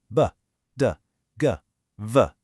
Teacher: These use far less muscular energy, but to make up for it, they activate your vocal cords. They're generally voiced. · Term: lenis consonants